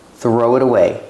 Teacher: the t is pronounced like a fast D because it's between vowels